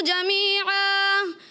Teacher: جمیعہ پہ وہی 2 زبر کی تنوین جب الف سے بدلا اس کے بعد ہا کی آواز تھوڑی محسوس ہوئی